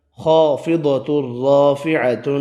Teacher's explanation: خا اور ضاد دونوں حروف مستعلیہ دونوں پر پڑھے